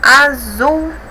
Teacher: Zul é a sílaba mais forte, então ela é oxítona.